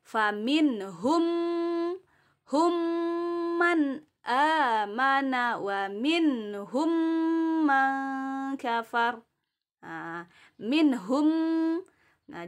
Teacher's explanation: ah minhum mah Jadi kalau ada mi hukum mim sukun atau mim mati bertemu dengan mim bertasydid dia dibaca dengung idgham dimasukkan dan disertai dengan dengung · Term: Idgham Mimi